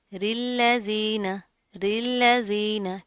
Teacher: इसको आपने मोटा नहीं करना, रा के नीचे ज़ेर आ रही है तो रा बारीक पड़ी जाती है। अब इस रा को हम इस्लाम के साथ मिला देंगे, ऊपर क्या है तशदीद है, तो मजबूती से जमा कर पढ़ेंगे।